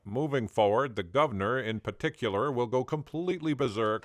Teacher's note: some Americans might also dissimilate the first R in words like governor, berserk, and particular